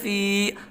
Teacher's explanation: یا ساکن سے پہلے زیر ہے، زیر کو تھوڑا کھینچ کر پڑھیں، معروف پڑھیں، مجہول آواز سے بچیں۔ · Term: یا مدہ